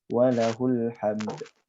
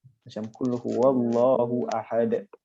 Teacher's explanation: pada huruf dal, kita kena bunyikan sedikit detakan